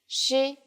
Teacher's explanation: it sounds like the SH in English, only with flatter lips